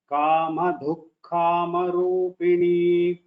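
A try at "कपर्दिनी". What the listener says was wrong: The second line, first word, this da is a alpa prana. Kapardhini.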